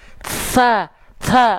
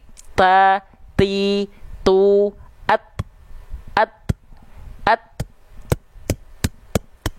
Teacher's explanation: dia bukan mengalir karena dia sifat suaranya kuat kuat tertahan makanya agak mampet nafasnya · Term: percikan-percikan nafas